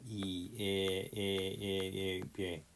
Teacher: 입천장의 중간점을 기준으로 했을 때 혀 최고점 위치가 앞쪽에 있는 거. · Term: 전설모음